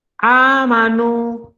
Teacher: ada wawu sebelumnya berharokat dhammah, dibaca dua harokat, dia juga mad tabi'i